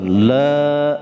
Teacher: Yaumal la, itu mad asli ya, panjangnya 2 harokat, 2 ketukan, la segitu, jadi jangan terlalu panjang